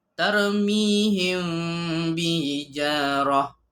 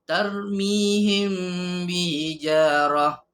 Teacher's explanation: menyembunyikan bunyi mim serta dengung, iaitu mim mati bertemu dengan ba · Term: ikhfa syafawi